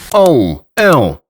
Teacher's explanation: And what makes this even better is that they change depending on the following consonant, and most of the time they're not even nasal in pronunciation at all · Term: nasal vowels